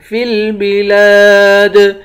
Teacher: دال حروف قلقلہ ہے، یہاں پر قلقلہ کریں گے · لام کے بعد الف ہے، الف حروف مدہ ہے، اس کو بھی ایک الف کی مقدار کھینچ کر پڑھیں گے